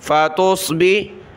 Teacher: تا باریک، صاد کو موٹا کیا